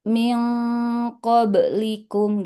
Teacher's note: dengungnya ikut tebal karena menyesuaikan dengan huruf qof yang tebal